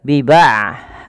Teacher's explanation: huruf ain tidak terlalu dialirkan dan tidak terlalu ditahan suaranya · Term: sifat bainiyah